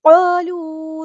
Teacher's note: قالوا قاف heavy letter ہے، پورا ادا کرنا ہے، الف مد آ گیا تو ایک الف کے برابر لمبا کرنا ہے۔ قالوا واو مد آ گیا ہے تو ایک الف کے برابر ہم لمبا کریں گے۔